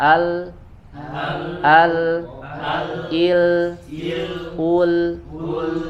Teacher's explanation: Hanya bedanya kalau huruf lam ini ya ketika dia suaranya ujung lidah atau hafah bagian ujung sisi lidahnya menempel ke bagian gusi, dia suaranya mengalir lewat samping inhiraf ya. Ya karena ujung lidahnya menempel ke bagian gusi jadi tidak bisa keluar suara, makanya suaranya lewat samping, ada inhiraf sifatnya.